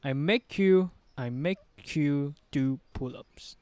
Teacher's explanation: So we have a linking sound, make and you. The K will blend will the K sound.